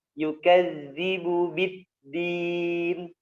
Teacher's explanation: bid dimatikan suaranya karena dia berada di gusi dan merupakan sifat syiddah